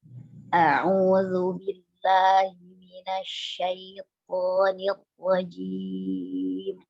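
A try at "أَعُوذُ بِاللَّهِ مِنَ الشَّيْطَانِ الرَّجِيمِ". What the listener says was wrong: Roknya jangan langsung berhenti ya, Bun. Nir rojim, enggak. Nir rojim.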